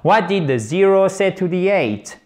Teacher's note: On a un mot interrogatif au début de la question, du coup, qu'est-ce qui se passe? Boum, l'intonation, l'intonation générale de la phrase va, ceci est une flèche descendante, chers amis, va descendre.